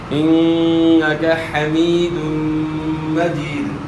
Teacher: اچھا، اس کے بعد پھر نون مشدد ہے، ان کا نون مشدد میں جو ہے نا آپ نے غنہ کرنا ہے، غنہ کی مقدار ایک الف کے برابر ہے،